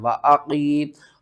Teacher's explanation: واو زبر وا، حمزہ زبر آ، و آ، قاف یا زیر قی، قاف کو آپ نے موٹا کر کے پڑھنا ہے